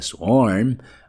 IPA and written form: swɔrm (swarm)